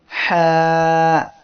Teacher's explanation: এই অক্ষরে এক আলিফ টান হবে। হা এই অক্ষরের মাখরাজ হলো কণ্ঠনালীর মধ্য হইতে হা উচ্চারিত হয়